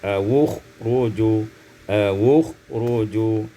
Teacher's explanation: Pada ayat 66, awi khuruju, dhammul waw waslan, didhammahkan waw secara wasal menjadi awukhruju